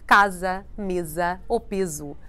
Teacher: the s changes to more of a z sound remember that an s between vowels in a word sounds like a z · an S between vowels in a word sounds like a Z, like casa, mesa, ou peso.